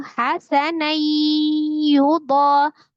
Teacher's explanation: Diidghamkan, ditasdidkan ke huruf ya disertai dengan dengung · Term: idgham bi ghunnah